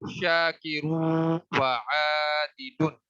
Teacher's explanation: اچھا، ایک بات ذہن میں رکھیں کہ یہاں پہ ہم نے غنہ بھی کیا ہے اور ادغام بھی کیا ہے، یعنی شاکرون کا جو نون ساکن ہے اس کو واو کے اندر مرج کر دیا ہے، ملا دیا ہے، مدغم کر دیا ہے